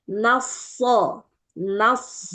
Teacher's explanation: Kemudian baru masuk shad. Ketika shad itu kan kita baru masuk ke huruf tebal baru cekungkan lidah.